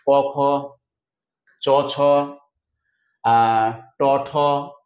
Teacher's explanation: অঘোষ শব্দটি মানে হচ্ছে যে বর্ণগুলো কম কম্পন হয় কম গর্জন করে সেগুলোকে বলা হচ্ছে অঘোষ।